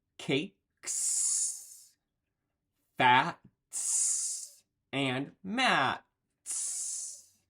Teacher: after voiceless phones we say an S sound